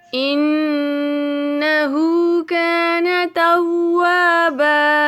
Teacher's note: نون مشدد پہ غنہ ہوگا. نون مشدد پہ غنہ کرتے ہوئے ہا کو ایک الف کے برابر کھینچتے ہوئے کان توابا.